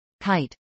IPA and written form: kˈaɪt (kite)